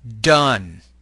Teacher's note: You should feel vibration of the vocal folds when you produce this sound. Less airflow than the T is pushed to the vocal tract when the D is produced.